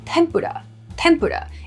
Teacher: Tempura, with a pur emphasis there, comes from the Japanese tempura.